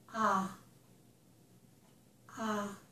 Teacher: my lips are not rounded. Okay? It's not back. I tried to make it in the center here. And my mouth is opened. Ah, ah. And it's really the center part of my tongue, which is rising up a little bit, okay? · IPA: / ɑ /